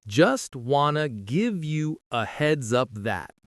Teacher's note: Stresses are on wan in wanted, heads in heads up, and that. The wanted to often blends to wanna.